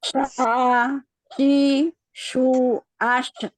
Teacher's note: jadi sukunnya kita alirkan namun tidak kita pantulkan